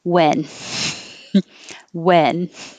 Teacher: we don't pronounce the h and we don't use extra air